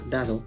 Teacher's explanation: la primera d se escucha más firme y breve mientras que la segunda suena algo más suave y prolongada